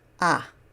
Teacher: this vowel, called a kamatz, makes a short ah sound